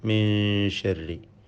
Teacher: ഇതിൽ സാക്കിനായ നൂനിനെ ഇഖ്ഫ ഹഖീഖി നൽകി അവ്യക്തമാക്കി മണിക്കേണ്ടതാണ്. മണിച്ചുകൊണ്ട് ഉച്ചരിക്കണം.